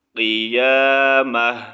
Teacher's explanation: یہاں پر بھی تا کا ساؤنڈ ہم نے وقف کی صورت میں ہا میں چینج کرنا ہے